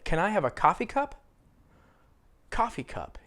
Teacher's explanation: americans usually stress coffee with coffee cup those two words are very common combination same thing with teacup